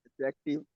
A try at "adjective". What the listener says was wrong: डी नहीं बोलना, डी silent होगा। जब भी जे से पहले डी आएगा वो साइलेंट होगा। डी को, डी को आपने बोलना ही नहीं है।